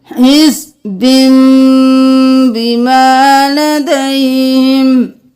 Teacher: نون کو ہم میم میں بدل دیں گے · ہم حزبن نہیں کریں گے، ہم با کو میم میں بدل دیں گے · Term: اقلاب